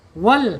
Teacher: Dimonyongkan wau gitu. Wal penekanan di huruf lam ya karena lam bertasdid ya harus penekanan.